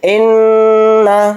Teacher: نون کو اوپر تشدید ہے تو نون میں غنہ کر کے پڑھیں گے